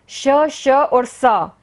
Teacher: अंदर से आती हुई हवा हमारे तालू को, हमारे मसूड़ों को, हमारे दांत को और हमारी जीभ से रगड़ खाकर ऊष्मा पैदा करती हुई बाहर निकल जाती है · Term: संघर्षी व्यंजन